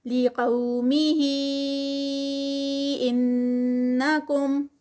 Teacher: قو پہ مد لین ہے, ہی 4 کاؤنٹس کا, ان پہ غنہ ہے